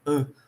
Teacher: Eu não falo esse N, vocês concordam? Eu falo an. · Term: som nasalizado